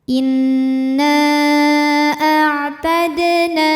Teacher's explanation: Mad tabi'inya alif didahului fathah pada kata inna, hamzahnya a pada kata kedua a'tadna. Maka nunnya dipanjangkan, boleh 4 boleh 5 harokat. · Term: mad jaiz munfasil